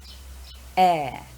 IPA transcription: eə